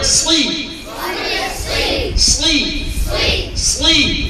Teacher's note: ঠোঁট গুলো বানাবো বাবা, দেখো ঠোঁট গোল হবে না, ঠোঁট গোল হবে না